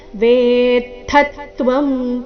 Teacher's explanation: ಥ ಮೇಲೆ ತದ್ದು ಆಘಾತ.